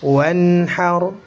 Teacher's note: Karena nun sukunnya dibaca jelas, huruf setelahnya juga jelas. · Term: izhar halqi